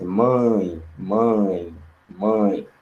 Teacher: Aqui em mãe, temos um ditongo que é nasal. Mãe, você fala vindo aqui das fossas nasais.